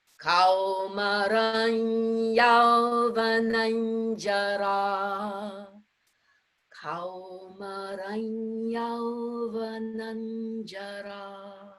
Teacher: Interesting line to chant, because both Anusvaras followed by the Y and then by the J, they dictate or they suggest strongly that we make that nasal sound be in the soft palate